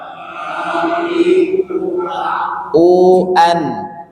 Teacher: ketika mengucapkan hamzah yang sukun itu pita suaranya tutup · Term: huruf hamzah